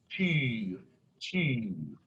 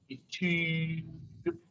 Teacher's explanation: It's an E tongue position, and I just round my lips. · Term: U umlaut